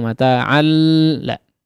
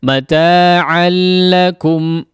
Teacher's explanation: Tanwin bertemu dengan huruf lam ya, maka diidghamkan tapi bila gunnah ya, bi ghairi gunnah, tidak disertai dengan gunnah. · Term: idgham bila gunnah